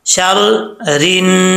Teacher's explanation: रा के नीचे जेर है, रा बरीक पड़ा जाएगा